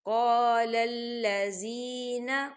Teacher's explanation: یا ساکن سے پہلے زیر ہے، یہاں پر یا مدہ ہو رہا ہے تو اسے دو حرکت کے برابر کھینچیں گے